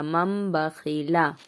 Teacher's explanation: نون نہیں پڑھا جائے گا، میم کو پڑھیں گے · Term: اقلاب